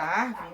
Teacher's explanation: a palavra árvore nós dizemos que ela é proparoxítona porque a sílaba tônica está na antepenúltima sílaba